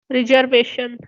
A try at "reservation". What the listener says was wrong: you are getting the jar sound when you are pronouncing sa. It should be reservation. Reservation. Reserve. Sa.